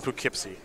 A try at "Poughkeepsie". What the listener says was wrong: Just Poughkeepsie. Don't pronounce it like a tourist. Just Poughkeepsie. You're like Po. It was a little bit too enunciated.